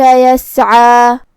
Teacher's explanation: کلمت یسعی میں یہاں حرف العین ہے، عین کو ہم حلق کے درمیان والے حصے سے ادا کریں گے۔ آخری میں مد طبیعی ہے تو 2 حرف کے برابر ہمیں اپنی آواز لمبی کرنا ہے